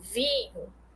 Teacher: o ar tanto sai pela boca quanto sai também pela cavidade nasal Ou seja é uma dupla saída de ar seu tampo a · Eu tenho um I nasal